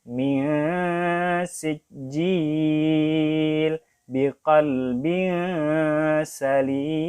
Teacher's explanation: Huruf sin dan huruf zai sama ya, tempat keluarnya. Nanti kita samarkan juga huruf nunnya.